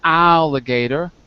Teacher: in the first syllable al it's just one vowel and the first syllable is the strong syllable in that word